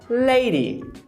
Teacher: É aquela açoitada de quando a pontinha da língua bate tão rápido nos alvéolos, que é aquela camada enrugadinha para fazer o D ou o T, que ele acaba virando esse fonema rareriroru. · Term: flapping